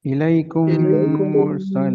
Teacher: میم ساکن کے بعد اگر میم آ جائے تو ادغام پلس غنہ ہوگا